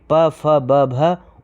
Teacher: प, फ, ब, भ ओष्ठ व्यंजन होते हैं।